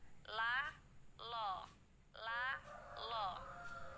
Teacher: ujung lidah berada di gusi tetapi bibirnya yang berubah bibirnya yang mulanya lemnya lam adalah tapi karena dia di sini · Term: lam jalalah tafkhim